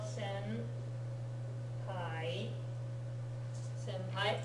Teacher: The only standalone consonant is that which in front of a sound that makes your lips come together like ma, ba, pa, it ends up sounding like the M rather than the N